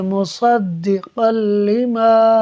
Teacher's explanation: ناظرین دیکھیں، یہاں پر قاف پر 2 زبر کی تنوین ہے، 2 زبر کی تنوین کے بعد لام حروف یرملون میں سے ہے، لہٰذا یہاں ادغام ہوگا، یعنی ہم قاف کو لام سے ملا کر پڑھیں گے بغیر غنہ کیے ہوئے